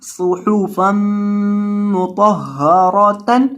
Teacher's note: پیش والے حرف کو ہمیشہ ہونٹوں کو گول کر کے پڑھتے ہیں، تو یہاں آپ نے ہونٹوں کو گول کرنا ہے صاد کے اوپر اور ہا کے اوپر